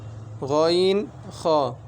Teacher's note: তিন নাম্বার মাকরাজ খলকের শেষ হইতে গইন খ